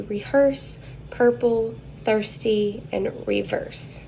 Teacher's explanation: the height is mid the advancement is central the lips are rounded and it is tense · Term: right hooked epsilon